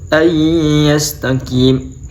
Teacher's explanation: Non sukun bertemu dengan ya, yaitu bacaan idgham bi ghunnah.